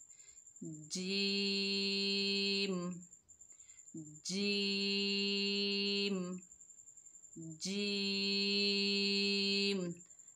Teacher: जीम की अदायगी में ज़बान के दरमियानी हिस्से को ऊपर तालु से लगाएं